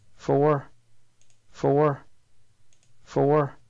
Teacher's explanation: this is a schwa with a roboticity symbol it means that as you're producing the schwa your tongue is also in the position to do an r so this is a rhodocized schwa and it means and it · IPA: [fo̞ʊ̆ɚ]